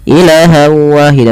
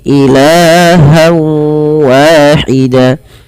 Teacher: Pada lafal ilah di sini kita panjangkan la-nya sepanjang 2 harokat karena ia ada mad tabi'i. Fathah bertemu dengan alif, jangan dipendekkan ya teman-teman.